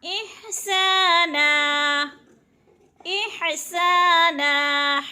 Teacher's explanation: ہا کو حلق سے یعنی گلے سے نکالنا ہے